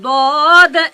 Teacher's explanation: জিহ্বার গোড়ার কিনারা, তার বরাবর উপরের পাশের দাঁতের গোড়ার সাথে লাগিয়ে নিচের দাঁতে চাপ দিয়ে মোটা মোটা আওয়াজে যার উচ্চারণ করতে হয়